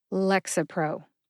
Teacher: as with celexa the written pronunciation does not indicate which syllable to emphasize but I tend to emphasize Lex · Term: emphasis